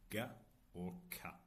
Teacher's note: the back used for velar sounds like g or k